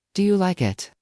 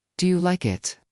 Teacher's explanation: Instead of just asking, Do you like it? in a flat voice, he added a curious rising tone.